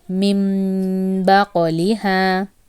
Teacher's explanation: I elongated for 1 second. Also, I changed that noon sound to meem. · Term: Iqhlab